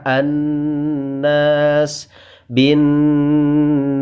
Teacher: suara yang keluar dari pangkal rongga hidung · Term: ghunnah musyaddadah